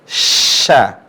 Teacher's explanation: kemudian syin Sya Tengah lisan ketemu langit-langit